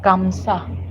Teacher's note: la conjugación como tal se pierde y pasa a ser solo como kamsa y ya no suena la J. Entonces las dos A como que se fusionan entre las dos y ya solo suena una.